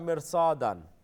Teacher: Mirsadan is, again, Ra's a full mouth letter because Swad is a full mouth letter. Even though according to the rule, this Ra should be empty mouth.